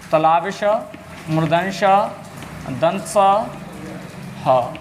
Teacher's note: जब हम इन वर्णों को बोलते हैं ना तो हमारे मुंह में गर्मी होती है, यानी घर्षण होती है, और घर्षण के कारण ऊष्मा उत्पन्न होती है। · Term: ऊष्म व्यंजन